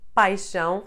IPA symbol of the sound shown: ʃ